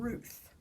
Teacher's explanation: So here I have a contrast between O, which is a voice sonorant, alveolar, and th, which is a voiceless fricative, interdental